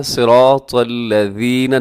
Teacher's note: الذین، اس میں ذال کا خیال کرنا ہے، کیونکہ اسے اکثر زا پڑھ دیا جاتا ہے، صراط الذین، تو بلکہ کیسے پڑھنا ہے، صراط الذین، نرمی کے ساتھ پڑھنا ہے، اور اس ذال میں سیٹی نہیں ہوتی.